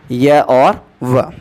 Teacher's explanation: 2 व्यंजन ऐसे हैं जिनके उच्चारण में किसी प्रकार का संघर्ष नहीं होता है। इस कारण इन्हें संघर्षहीन व्यंजनों के नाम से जाना जाता है और इन्हें अर्धस्वर भी कहा जाता है।